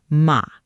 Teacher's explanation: a sharp, low drop-off tone